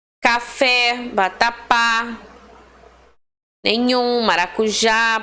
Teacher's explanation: todas elas terminam aí na sua última sílaba mais forte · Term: oxítonas